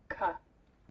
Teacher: That's why I call it stop. It stops the air completely for parts of seconds. Then the closure is released. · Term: velar stop